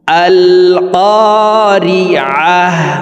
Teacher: আল ক্বারিআহ আল ক্বারিআহ, আইন হরফকে হলকের মধ্যখান থেকে উচ্চারণ করব।